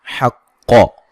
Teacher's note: क़ाफ को मोटा अदा करेंगे